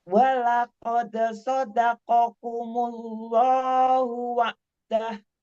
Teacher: Jangan dipanjangkan karena nggak ada mat setelah dah.